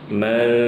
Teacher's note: suara ikhfa pada nun ketemu fa, suara gunnahnya ditipiskan